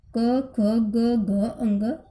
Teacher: अब एक चीज ध्यान रखो आपके कि जो कै वर्ग है वो किससे बोला जाता है? कंठ से।